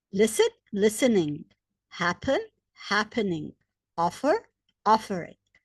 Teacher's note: The stress is on the first syllable. Therefore, we just add ing.